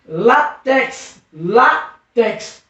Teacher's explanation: Percebeu que a sílaba tônica é no lá. É paroxítona.